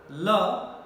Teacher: La, during the production of la, see, tip of the tongue is touching the teeth ridge. Though it is blocking the teeth ridge, but side of the teeth, blade of the teeth is open. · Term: lateral sounds